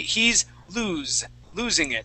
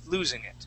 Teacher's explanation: it would be he's losing it, and that is with the voiced S